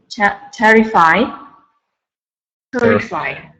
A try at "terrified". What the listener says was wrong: With a D, terrified.